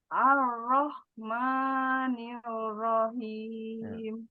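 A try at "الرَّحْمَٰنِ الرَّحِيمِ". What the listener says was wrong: Namanya kepanjangan dua saja. Ar-Rahmani. Nah, begitu.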